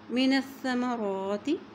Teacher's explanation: نون جو ہے وہ سا کے ساتھ ملاتے ہوئے پڑھیں گے